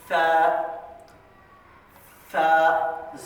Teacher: دانتوں کا اوپر کے دانتوں کے کنارے، جیسے دیکھیے ثا ثا، زبان کی نوک اور اوپر کے دانتوں کا کنارہ ، یہ آواز یہ لگنے سے ثا کی آواز آتی ہے۔